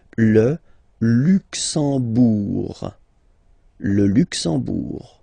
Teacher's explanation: You don't pronounce the M at all, it's this nasal en, okay? Le Luxembourg.